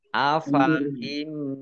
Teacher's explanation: Jadi tidak dibaca afaim tidak, tapi fa-nya dibaca pendek. Nun sukun bertemu dengan huruf mim bacaan idgham bi gunnah masuk dengan mendengung yaitu masuk mendengung mim ditandai mimnya ada tasdidnya.